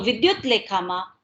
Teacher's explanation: વિદ્યુત લેખામાં લ ને કારણે ત જે છે એ લ માં પરિવર્તન પામે છે અને વિદ્યુત લેખા એવો ધ્વનિ આપણી પાસે આવે છે.